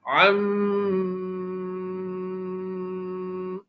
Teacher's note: میم کی ادائیگی جب ناک کے ذریعے سے ہو رہی ہو تو اب یہ جو ناک میں آواز گھمائی جا رہی ہے، یہ جو آواز گھوم رہی ہے یہ میم کی آواز ناک میں جو گھوم رہی ہے یہ خیشوم میں گھوم رہی ہے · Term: غنہ